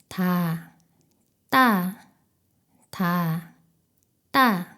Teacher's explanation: 혀끝과 윗 잇몸 사이에 훨씬 강한 긴장과 힘을 주어 공기를 막았다가 숨을 전혀 내보내지 않으면서 소리를 터뜨립니다. 목구멍에 힘을 주어 성대가 긴장하는 느낌이 있습니다. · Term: 쌍디귿